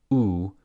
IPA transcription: u